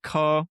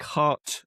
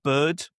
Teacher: coming from southern England, specifically Southeast England, I don't pronounce the R. There's no recognizable sound that matches up to the R.